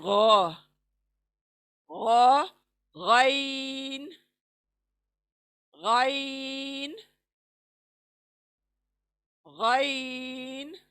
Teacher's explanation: ये शुरुआती हलक से, यानी हमारे मुंह की तरफ जो हलक है शुरू होता है हमारा, वहां से अदा होगा मुंह के तरफ का हिस्सा।